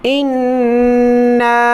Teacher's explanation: حمزہ نون زیر ان، نون الف مد زبر نا، نون پر غنہ کر کے اس کے بعد الف کو اوپر کی طرف کھینچیں